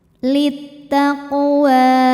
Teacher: Kemudian ada hukum qalqalah sughra, karena huruf qalqalah qaf sukunnya asli dan ada di tengah bacaan, maka dibaca dipantulkan dengan pantulan yang kecil.